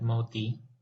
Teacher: To produce the first T sound, the T in the Hindi word moti, meaning pearl, the speaker stops the airflow by placing the tip of the tongue behind the lower part of the upper teeth. This place of articulation is called dental, so this consonant is called a dental consonant.